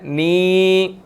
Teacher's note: नून के बाद या मद्दा है, नी, 1 सेकंड हम इसको खींच कर पढ़ेंगे